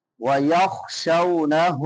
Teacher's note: شین کے بعد واو لین ہے، اور ہا کے اوپر الٹا پیش ہے، ایک الف کے برابر لمبا کریں گے